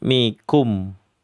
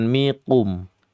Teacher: Karena sifatnya istifal. Kaf itu sifatnya istifal. Sifatnya hamas, sifatnya syiddah.